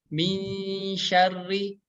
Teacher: ketika kita membacanya samar ya, posisi lidah kita harus siap ke tengah lidah kita nempel ke langit-langit yang atas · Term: hukum ikhfa